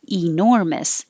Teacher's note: the e is not stressed so you could say it with the e enormous but most likely it will change to uh